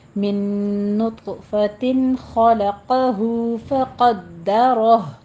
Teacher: قوف کو پر پڑھنا ہے، دال کے پر تشدید ادا کرنی ہے، رو کو بھی پر پڑھنا ہے